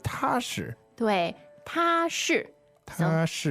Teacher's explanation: okay, so that's first tone, fourth tone, right?